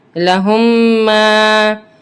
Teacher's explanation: ہم نے رول پڑھا تھا کہ ہم اس کو ساکنہ کو omit کر کے ہم اس کو مشدد کے ساتھ ملائیں گے اور میم کو سختی کے ساتھ جماؤ کے ساتھ پڑھیں گے اور غنہ کریں گے کیونکہ میم مشدد ہے